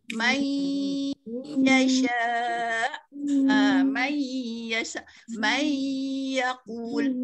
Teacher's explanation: Ya ni datang daripada tengah-tengah lidah. Kalau kita tidak sampai ke rongga hidung, makanya dia tidak betul lah nun mati itu bertemu dengan huruf ya. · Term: nun mati bertemu dengan ya